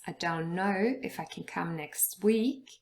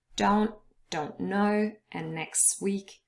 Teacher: the t is lost in both of those words and that is natural